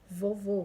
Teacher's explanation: acento agudo indica a sílaba tônica como são aberto exemplo café o acento circunflexo também indica a sílaba tônica porém o som dele é fechado